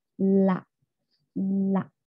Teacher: udaranya keluar dari sisi kanan dan Sisi kiri · Lateral ialah ujung lidah bersentuhan dengan gusi dan udara keluar dari sisi-sisi lidah samping. Bunyi itu udara itu tidak keluar dari ujung lidah tapi dari samping-samping lidah, yaitu la.